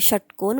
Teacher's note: म्हणजे जर तुम्ही षटकोन म्हणालात तर तुम्हाला लक्षात येईल की जिभेचा जिभेचा टच जो आहे तो मूर्धन्याला होतो